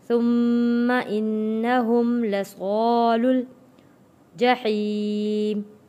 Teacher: ثم انہم لصال صاد حروف مدہ، الف ہے، الف سے پہلے زبر، حروف مدہ ہے، لام جڑے گا جزم والے لام کے ساتھ